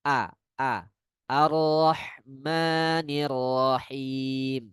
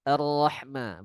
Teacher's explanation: Walaupun dia hanya hamzah wasal, harus fathah secara jelas.